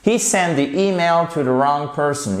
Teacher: Attention, on ne dit pas to the wrong, non, to the wrong. You do not pronounce the W here.